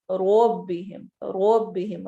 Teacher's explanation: رو کو موٹا کر کے پڑھنا ہے چونکہ اس کے اوپر فتح آ گئی ہے